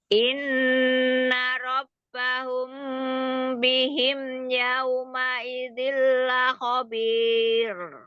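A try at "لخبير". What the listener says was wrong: Jangan tebel. Khabir. Tipis dia takrir. Tarkik.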